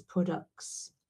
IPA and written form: ˈprɑdʌks (products)